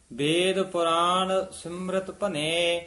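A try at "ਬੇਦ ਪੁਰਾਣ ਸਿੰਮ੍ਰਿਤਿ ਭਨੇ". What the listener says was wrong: ਸਿਮਰਿਤ ਪੋਲਾ ਬੋਲਣਾ ਹੈ। ਵੇਦ ਪੁਰਾਣ ਸਿਮਰਿਤ ਭਨੇ।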